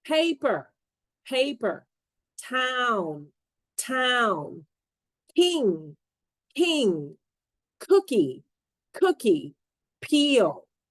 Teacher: puff of air which can make the word harder to understand in English these sounds are aspirated when they're at the start of a syllable to aspirate a sound means you release a puff of air